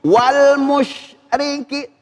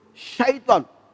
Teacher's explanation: ada huruf shin, ini harus tafasyi. Tafasyi artinya apa? Yaitu nyembur.